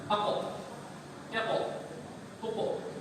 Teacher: أقو يقو قلقلة هذا كمثل البالون في العيد Nah, للصغار يلعبون. إذا قاف سكون قلقلة هكذا ينفجر. nah, إذا كان ينفجر إذا تفخيم كثير.